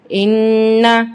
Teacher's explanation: یہاں پہ نون مشدد ہے تو یہاں پہ نون پہ غنہ ہوگا